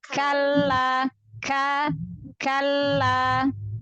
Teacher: Ahsan, Masya Allah. Ya, jadi K-nya jelaskan syiddah. Kaf itu punya syiddah jahar. Jadi kuat jelas ya.